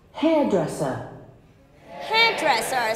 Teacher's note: so it should be on hairdresser the first syllable